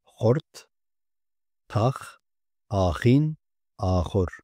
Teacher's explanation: Kürtçe özgü olan H harfi boğazdan gelen hırıltılı H sesidir. Türkçe'de bu ses yoktur.